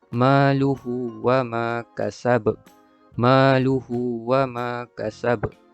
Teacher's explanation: bunyi lantunan pada huruf ba di akhir kalimah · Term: qalqalah kubra